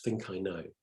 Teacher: we've got that unvoiced plosive at the end of think, but it's softened and absorbed by the long vowel sounds